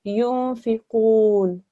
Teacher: I stopped on the noon. I didn't say the fatha. And that's because when you pause on a letter which carries a fatha, when you stop there, that fatha changes to a sukoon. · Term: noon sakin